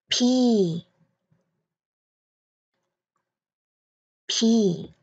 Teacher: Chữ cái này mình sẽ phát âm rất là giống với letter B. Nhưng chữ cái này cần bật hơi ra một chút, mạnh hơn một chút nha